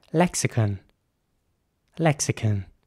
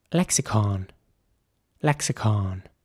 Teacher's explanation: in British English it would be more like lexicon with a kin sound at the end